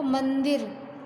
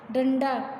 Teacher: अनुस्वार का उच्चारण करते समय हवा केवल नाक से निकलती है